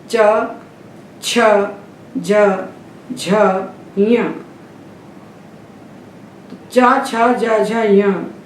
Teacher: चव के जो व्यंजन है इनको बोलते हैं तालू से तालू दात के पीछे वाला हिस्सा इसलिए इनका नाम है तालव्य